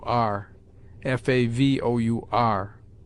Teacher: the last syllable gives the sound neither of or nor ur, but a sound between them, if not compounded of both.